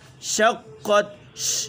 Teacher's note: شین میں تفشی پیدا کرنی ہے